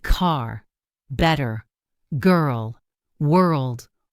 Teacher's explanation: Americans pronounce R with the tongue pulled back slightly. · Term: American R